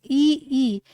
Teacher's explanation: इ ई किनका प्रयोग हो रहा है? तालु का प्रयोग हो रहा है। तो ये जो है तालव्य हो गए।